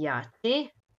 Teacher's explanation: k plus j stopilo se u č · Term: jotacija